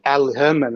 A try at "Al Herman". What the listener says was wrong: Don't pronounce. Everybody makes the mistake of trying to pronounce the L. Don't pronounce the L.